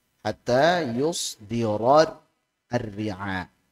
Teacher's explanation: Ra tebal, kemudian ra tipis.